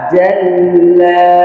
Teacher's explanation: জিমটা হবে শক্ত বাতাস বন্ধ এমন যেন বাতাস বের না হয়